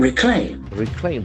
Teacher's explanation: There are two syllables and the accent falls on the second syllable.